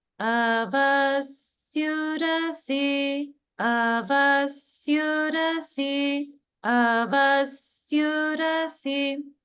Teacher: So notice in this word that there are two lower swaras in the beginning. So in this case, the first one will go even down a little bit more.